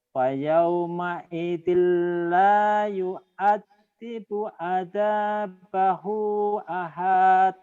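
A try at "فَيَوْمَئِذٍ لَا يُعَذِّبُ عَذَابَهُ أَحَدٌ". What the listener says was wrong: Pendek, ahad.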